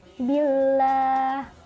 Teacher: Huruf lam dalam lafal Allah didahului oleh harokat kasroh, maka harus dibaca tipis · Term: lam tarkik